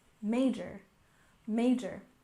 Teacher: Next we have major. Stress the first syllable.